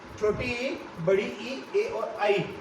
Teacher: इनका उच्चारण है जो जीव के अग्र भाग से किया जाता है। जीवा होती है हमारी, उस जीवा के अग्र भाग से इनका उच्चारण होने के कारण इन्हें कहते हैं अग्र जीवा स्वर।